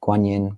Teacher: Um Guanyin, both first tone.